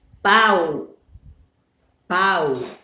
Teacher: O A, eu só ouço o som do A. O som do U não dá para escutar direitinho. Então, este U, ele é semivogal.